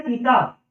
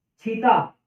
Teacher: सह की जगह पर छह हो जाता है